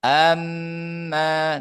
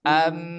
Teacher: itu makhrajnya mim adalah syafatan dua bibir